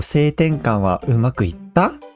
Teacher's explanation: So that's a question with that rising intonation at the end.